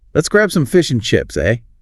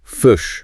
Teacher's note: One of the things people notice about New Zealand English is that I sound often sounds more like a U sound. Oh, okay. So fish can sound a bit like fush.